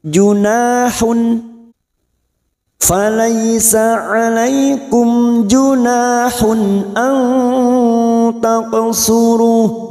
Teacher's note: Kita uraikan dari kata junahun, karena sekarang kita wasal atau terus huruf ha yang berharokat dhamma tanwin kita baca jelas tanpa mendengung karena bertemu hamzah. Nun sukun atau tanwin yang bertemu dengan 6 huruf ini, hamzah, ha, kha, ain, goin, termasuk hamzah ini, maka dhamma tanwin kita baca jelas tanpa mendengung.